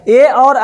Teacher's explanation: ए और ऐ बोला जाएगा कंठ तालु से